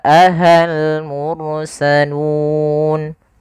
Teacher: Kemudian hal, di sini ada alif lam, alif lam qamariyah. Mursalun, ra-nya tebal karena dia huruf ra didahului dengan huruf dhammah